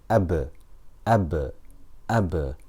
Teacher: ba is shidda, so the sound does not continue, and it is also jahr, so the breath does not continue either. Ab, ab, ab, and this is why it's qalqala, because qaf, ta, ba, jim and dal are shidda and jahr, and because of this we have qalqala.